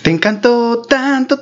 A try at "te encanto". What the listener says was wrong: No, dijiste Encanto, no encantó. No es lo mismo.